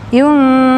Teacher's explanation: Ikhfa ab'ad namanya. Karena nun itu di ujung lidah, sedangkan qa di pangkal lidah, jauh jaraknya.